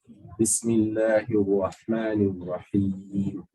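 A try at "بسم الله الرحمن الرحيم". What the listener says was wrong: Okay, so lip movement, minimize it. Yeah, so this is what you're doing.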